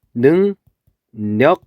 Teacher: 그랬을 때 얘는 발음을 하면은 어떻게 발음되냐면 능력 이렇게 발음이 돼요. 왜냐면은 비음이 아니었던 유음이 이렇게 비음으로 바뀌어서 그걸 우리는 비음화라고 불러요